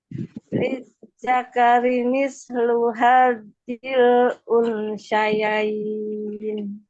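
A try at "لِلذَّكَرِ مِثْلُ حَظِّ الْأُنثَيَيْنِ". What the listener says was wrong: Nah, ini sa-nya pindah ke shin ya. No. Hal. Musa. Bukan sya.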